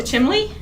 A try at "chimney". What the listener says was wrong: There's no L's in